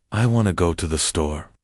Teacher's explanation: The important words, the content words like go and store are stressed while the little grammar words like to and the r squished and reduced.